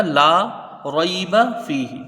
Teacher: لام کے ساتھ علم مدہ ہے، 1 الف کے برابر اس کو کھینچ کے پڑھا جائے گا۔